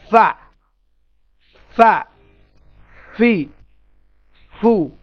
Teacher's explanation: উপরের দাঁত ও নিচের ঠোঁট। উপরের দাঁত, এই মোটা দাঁত দুটি, যে যে দাঁত দুটির নাম হচ্ছে সানায়া উলিয়া, ওই দাঁত দুটি, আর নিচের ঠোঁট শুকনো অংশটুকু টাচ হবে